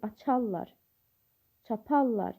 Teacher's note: Yəni vurğu ikinci hecanın üzərində olur.